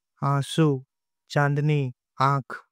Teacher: जब स्वर बिना किसी अवरोध के नाक से उच्चारित हो तब इसे अनुनासिक या चंद्रबिंदु कहते हैं